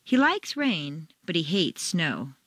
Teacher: like and hate are contrasted and are the stronger words in the sentence